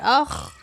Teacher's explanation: اس کو اخ پڑھیں گے کیونکہ یہ حروف قلقلہ نہیں ہے